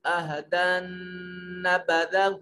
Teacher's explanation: عہدن میں نون جو ہے یہ مشدد ہے، غنہ واجب ہوگا